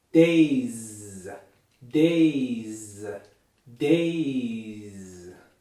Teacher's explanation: the words I say will be voiced throughout the entire word. So once you get those vocal cords vibrating, keep them vibrating until we stop saying the word. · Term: voiced consonants